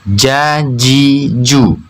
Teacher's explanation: Tengah lidah harus benar-benar menempel pada langit-langit di atasnya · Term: huruf Jim